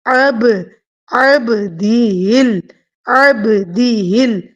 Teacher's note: آئین کی آواز وسط حلق سے اور با ساکن کے اوپر قلقلہ